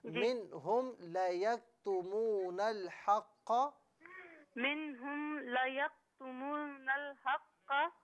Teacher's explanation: میم ساکن جو ہے نا اس پر غنہ نہیں کیجیے